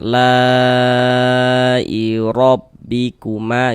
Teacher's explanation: Huruf ro memiliki harokat fathah, maka huruf ro dibaca tabkhim, dia dibaca tebal sehingga dengan menaikkan pangkal lidah kita ketika kita mengucapkannya · Kemudian mad tabi'inya bertemu dengan ini, dengan huruf hamzah tapi dalam satu kata atau dalam satu kalimat, maka dia berubah menjadi mad wajib muttasil. Panjangnya 4 sampai dengan 5 harokat.